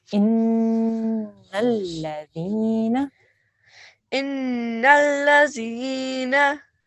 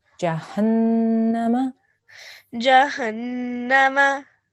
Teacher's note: when we join and we have a noon gunna, we have to make a nasal sound for about 2 seconds.